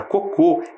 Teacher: a palavra cocô é oxítona tem a última sílaba tônica